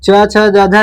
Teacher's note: च वर्ग का उच्चारण स्थान तालु है